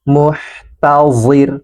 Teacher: huruf ha yang sukun, alirkan nafasnya